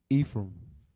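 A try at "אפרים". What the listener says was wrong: So again, there's the E sound. There's no E sound in the Hebrew. It's abagada, and then there's no fa sound.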